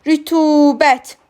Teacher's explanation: Rütubət u saiti uzun tələffüz olunur. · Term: uzun tələffüz olunan sait